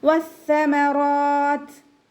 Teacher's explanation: പിന്നെ ത കൽക്കല ലെറ്റർ അല്ലാത്തത് കൊണ്ട് ഹാഫ് സുക്കൂന് കൊടുക്കും വേണം. പിന്നെ താക്കും കാഫിനും സുക്കൂനാവുന്ന സമയത്ത് കുറച്ച് എയർ പാസ് ചെയ്യണ സൗണ്ട് കൊടുത്തിട്ട് വേണം നമ്മൾ വഖഫ് ചെയ്യാൻ.